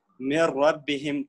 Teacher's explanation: اس میں جو نون ہے اس کو سکپ کریں گے اور میم اور را کو آپس میں ملائیں گے